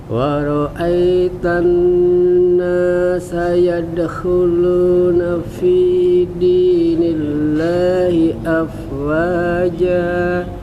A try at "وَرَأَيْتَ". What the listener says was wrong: Cuman tadi yang ai-nya Pak kayak masih ada e-nya. Waro'ai. Harusnya waro'ai. Ai. Nah waro'ai. Kasrohnya, ininya jangan sampai e. Cuman dikit doang tapi nggak banyak.